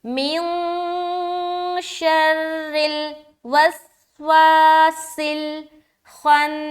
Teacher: سین میں سیٹی کی آواز ظاہر کرے